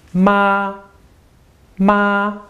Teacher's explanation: the first tone let's practice with our old example ma your voice is high in steady just a straight line